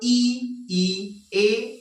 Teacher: अग्र स्वर जो जुबान के आगे के हिस्से से निकलते हैं